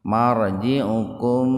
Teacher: mim sukun ketemu fa secara terpisah, jadi dibaca jelas di bibir tuh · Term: idhar safawi